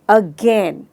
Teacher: गेन में, अगेन। So अगेन शब्द में गेन पर हमने स्ट्रेस दिया है।